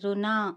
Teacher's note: రుణ అన నాలుకను పైకి మడిచి పలకాలి.